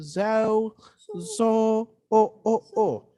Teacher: we do not want to have a diphthong. We do not want to have a glide or two vowels, just very clean vowel.